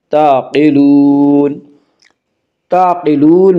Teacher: قاف کو پر پڑھا جائے گا، قاف حروف مستعلیہ میں سے، حروف مستعلیہ 7 ہیں جن کا مجموعہ خص ضغط قز، یعنی خا، صاد، ضاد، غین، طا، قاف، ضا، یہ 7 حروف ہمیشہ ہر حال میں پر پڑھے جاتے ہیں۔